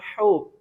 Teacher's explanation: یہ ہا جو ہے گول ہا ہے، یہ حلق کے نچلے حصے سے یعنی سینے کی طرف والا حصہ ہے، اس کو ہم پڑھیں گے ہو. اور یہ حلق کے درمیان سے ادا کریں گے